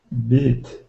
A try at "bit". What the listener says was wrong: Bit. Not beat, but I. Try saying